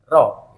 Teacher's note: Nah, ro ini ada getaran sedikit ya, punya sifat takrir. Ini roh, nggak boleh sampai getarnya berlebihan, cuman 2 getaran sudah cukup ya. Ini makhrajul hurufnya ujung roh, yaitu di ujung lidah agak ke dalam ya, ujung lidah agak ke dalam terus sedikit mengenai gusi gigi seri yang pertama, gigi seri yang pertama.